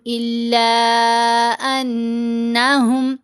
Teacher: الا، لام کے اوپر یہ جو مد ہے مد منفصل ہے، اس مد کو ہم نے 3 سے 4 حرکات کی مقدار لمبا کرنا ہوتا ہے